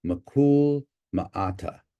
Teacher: This is an anglicized pronunciation. We've lost that laryngeal increment, that H, and the unstressed vowel has reduced to something unrounded.